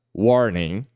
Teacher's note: a primeira sílaba é a sílaba mais forte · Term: sílaba tônica